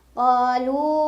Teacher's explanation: Jadi mad tabi'i dengan hamzahnya sudah terpisah makna ya. Dibaca 4 atau 5 harokat lamnya. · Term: mad jaiz munfasil